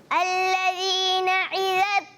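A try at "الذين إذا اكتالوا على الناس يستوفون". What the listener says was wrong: اچھا الذین میں کیا ہے؟ حمزہ ہے، عین نہیں ہے.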